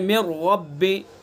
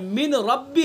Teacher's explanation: यहाँ से वही बतलाया गया है कि लाम रा में इदगाम ताम, जैसे मिर रब्बी, देखिए मिर रब्बी इदगाम ताम किया, नून साकिन का रा में इदगाम कर दिया है। मिर रब्बी, नून की कोई आवाज़ नहीं, असल क्या है मिन रब्बी है, मिन रब्बी है, लेकिन नून का हमने आगे रा में इदगाम कर दिया है तो क्या बन गया मिर रब्बी।